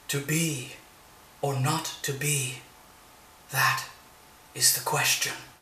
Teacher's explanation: notice how the last word question ends unstressed · The feminine ending is a line that has 11 syllables instead of 10. And the last syllable is unstressed.